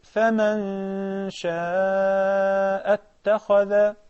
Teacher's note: There is a ghunna because there is ikhfa. The noon, which is a non-vowel noon here, in the word faman, non-vowel, is followed by the sheen.